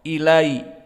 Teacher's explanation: Ilaina, maka hamzah pada ilaina muraqqaqah dan lam juga muraqqaqah